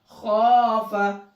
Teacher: हमने यहाँ पर सिर्फ खा को खींचा है क्योंकि यहाँ पर अलिफ मद्दा है, अलिफ है और उससे पहले जबर है, लेकिन फा को जल्दी पढ़ा है, खींच कर नहीं पढ़ा है